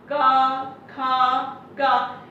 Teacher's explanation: इन सब में हमारा जो स्वर की हवा है वो कंठ से होकर के सीधे निकलती है।